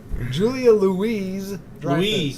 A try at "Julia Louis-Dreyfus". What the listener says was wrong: Louis. Julia Louis Dreyfus. Yeah, it's silent.